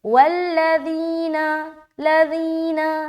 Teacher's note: تو یہاں پر ہم پڑھیں گے والذین، والذی ذی ذی، ذال کی ادائیگی نرمی کے ساتھ ہوگی بغیر سیٹی کیے